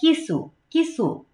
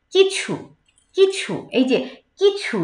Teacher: ছর যে মহাপ্রাণের যে বাতাসটা, সেটা হাতে গিয়ে লাগছে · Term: ছর উচ্চারণটা